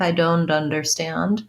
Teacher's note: you heard something that sounded more like i don't understand then people are linking that t and putting it on the u i would recommend trying to use don't with the stop t